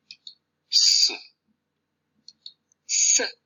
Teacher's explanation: This alveolar fricative is voiceless, that is, produced without vocal fold activity.